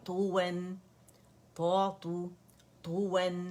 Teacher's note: تو نہیں بنائیں گے اور نہ تو عطا کے درمیانی اس کی آواز ہوگی بلکہ تو مخفم ہے